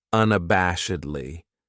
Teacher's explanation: This adverb has 5 syllables, and the stress is on that third syllable. That bash.